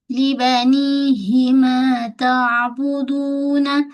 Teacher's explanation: Bila ain mati jangan bunyi hamzah. Jangan tak tapi lunak. Ta ain ada sifat tawassud.